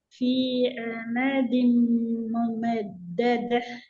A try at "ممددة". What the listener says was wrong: ஹா சவுண்ட் போகக்கூடாது ஹ சவுண்ட் வரணும் ممددة